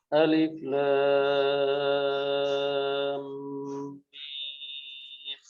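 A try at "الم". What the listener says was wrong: Mimnya kurang panjang, panjangnya sedikit mimnya, 6 harokat.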